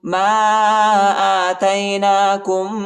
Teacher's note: میم کے بعد جو الف اس کے اوپر چھوٹا مد ہے، اس کو تقریباً 2-3 سیکنڈ تک کھینچیں گے، اور حمزہ پر کڑا زبر آیا ہے، اس کو ایک الف کی مقدار تک کھینچیں گے، ٹھیک ہے۔